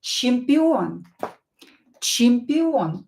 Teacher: O is stressed here, so read it as O, pronounce it as O.